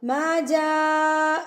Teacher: ما جا، بڑی مد، مد متصل، آگے حمزہ آ گیا، اس سے میں نے پہچانا کہ بڑی مد ہے. اس کو ہم 4 حرکات کے برابر کھینچ کے پڑھیں گے